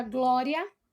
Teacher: o A sai com maior tonicidade do que o I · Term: ditongos crescentes